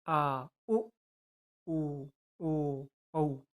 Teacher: जिन स्वरों के उच्चारण में जीव का पश्च भाग काम करता है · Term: पष्ट स्वर